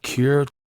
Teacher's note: the schwa is here totally absent in the word cure